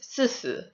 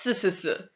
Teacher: But in Sichuanhua, because they don't have that H, when they say 44, or when they say 14, it is si si